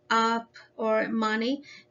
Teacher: it's an open mid vowel sound